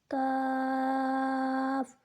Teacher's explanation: کاف کو 3 الف کے بقدر کھینچ کر پڑھیں گے